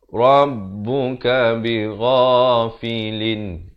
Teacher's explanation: Izhar halqi. Bunyi saja lin, jangan panjang.